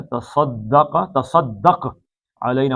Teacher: سواد موٹا ہے اور کاف بھی موٹا ہے، تا پتلا ہے